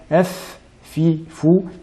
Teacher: en utilisant l'extrémité des incisives supérieures sur l'intérieur de la lèvre inférieure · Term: lettre fa